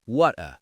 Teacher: Now, the British, depending on the region, might use what's called a glottle stop. They literally stop the air in their throat. · They literally stop the air in their throat, so water becomes wutta. The T just vanishes. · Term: glottal stop